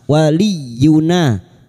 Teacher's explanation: wali masuk pada huruf ya yang bertasdid hanya masuk tanpa ditahan lama-lama